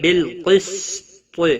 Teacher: بالقسط قاف حروف مستعلیہ میں سے پر پڑا جائے گا